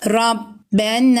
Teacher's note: nun harfinin yanında harfi medden Elif var Meddi tabii olur ve bir elif miktarı uzatılır